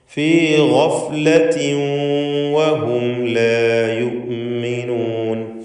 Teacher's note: ഗഫ്ലത്തിൻ വഹും ഇവിടെ തൻവീൻ ഇദ്ഗാം ബിഗുന്ന ചെയ്ത് വാവിലേക്ക് ലയിപ്പിച്ച് മണിച്ചുകൊണ്ട് ഉച്ചരിക്കണം.